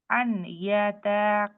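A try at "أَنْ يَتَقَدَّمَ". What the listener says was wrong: আচ্ছা এখানেও আবার এই যে নুন সাকিন আপনি এখানে মিস করছেন আন ইয়াতা বলছেন আই ইয়াতা কদ্দামা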